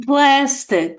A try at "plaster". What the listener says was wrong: Plaster with an R at the end.